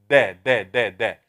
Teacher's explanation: tip of the tongue touching uh behind the upper teeth to the root of them